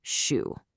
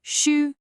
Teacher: You actively curl the very tip of your tongue up so it's pointing toward the roof of your mouth. That one little change, shu, creates a completely different sound. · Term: Mandarin shu sound